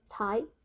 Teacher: I have slash two which means it's second tone goes up tight. The meaning of this character is wood material ready for use.